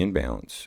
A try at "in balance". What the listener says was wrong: You said it really fast, so it sounded like imbalance again.